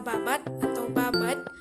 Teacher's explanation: Bunyi konsonan letupan suara D pada akhir kata berubah menjadi konsonan homogen tak bersuara menjadi T. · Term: netralisasi